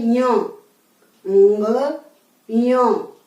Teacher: इसका तालु और नासिका उच्चारण स्थान है, तो इसका हमें बोलना है ञ, ञ।